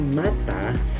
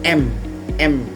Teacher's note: diucapkan dengan bibir tertutup dengan suara keluar dari hidung seperti M. Huruf S seperti pada kata sapu diucapkan dengan aliran udara di antara gigi sehingga menjadi S.